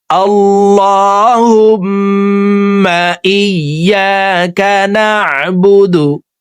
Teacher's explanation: হুম এখানে ওয়াজিব গুন্না, 3 সেকেন্ড পরিমাণ গুন্নাহ করে পড়ব।